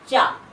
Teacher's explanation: तो जीवा जब आप बोलेंगे चा, तो जीवा जो है तालु को स्पर्श करती है, दांतों को स्पर्श नहीं करती, तालु को स्पर्श करती है। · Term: तालव्य